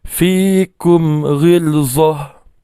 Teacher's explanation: izhar syafawi ni dibaca dengan cara merapatkan kedua bibir tapi tanpa dengung